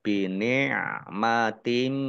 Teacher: Kasroh tanwin bertemu dengan huruf mim, bacaan idgham bi gunnah masuk dengan mendengung, yaitu mendengung mim ditandai mimnya ada tasdidnya, dibaca gunnah atau mendengung ditahan 2 harokat.